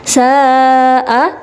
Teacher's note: Karena ada mat bertemu dengan huruf hamzah dalam satu kalimat, bacanya sa'a dan panjangnya adalah 2,5 alif atau 5 harokat. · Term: mat wajib muttasil